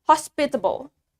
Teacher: In British accent, the stress is in the middle or in the second syllable.